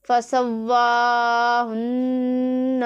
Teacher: فَسَوَّاهُنَّ، واو کے اوپر کھڑا زبر ہے، اسے ایک الف کے جتنا کھینچ کے لمبا کر کے پڑھیں گے، اور نون کے اوپر شد ہے تو میم مشدد اور نون مشدد میں ہمیشہ ہی غنہ ہوتا ہے